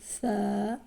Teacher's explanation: یہ تا کے بعد آتا ہے جب آپ کی زبان کی نوک اوپر والے دانتوں کے کنارے پر لگتی ہے، جن دانتوں کو ثنایا علیہ بھی کہا جاتا ہے۔ تو جب زبان کی نوک اوپر کے دانتوں کے کنارے سے ٹچ ہو تو نرم آواز میں ث ادا ہوتا ہے